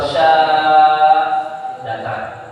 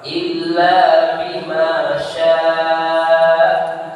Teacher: Nah, wakafnya adalah hamzah pada syiddah murakab. Maka ujung bunyi kita adalah pada huruf hamzah